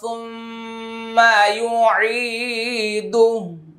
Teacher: দেখেন আমি এখানে আবার ওয়াকফা করেছি, হায়ের উপরে জজম হয়ে গেছে, টান হয় নাই।